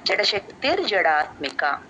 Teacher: జడశక్తి దగ్గర విసర్గ ర సౌండ్ అయిపోతుంది